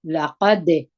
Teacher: قاف دروندي د دال سره یو ځای کوو. دال د قلقلیه توري دي پر دال باندې د دال اواز باید قلقله وکړي